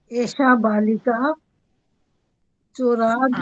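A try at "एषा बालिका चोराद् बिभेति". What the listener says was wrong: फिर विसर्ग बोल देते हो। विसर्ग मत बोलो, आप बोल दो बालिका। ऐशा तो ठीक बोला, बालिका में बोला।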